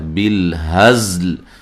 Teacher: زا کو سیٹی سے ادا کرنا ہے اور لام کو بھی ساکن کرنا ہے وقف کی صورت میں.